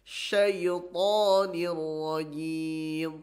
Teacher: huruf to tidak ada hamesnya, tidak keluar angin, ya, tidak hames.